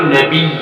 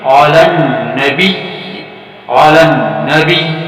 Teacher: اب تیسرا لفظ پیش خدمت ہے علی النبی، علی النبی، لیکن آپ دیکھ رہے ہیں کہ یہاں پر بھی وقف مطلق ہے اور ٹھہرنا بہتر ہے، تو ٹھہرنا ہی پڑے گا، اور جب ٹھہرا جائے تو پھر نبی نہیں ہوگا بلکہ علی النبی، علی النبی، صرف یا مشدد کی آواز آئے گی اور زیر حذف ہو جائے گی، زیر کو ختم کرنا ہوگا۔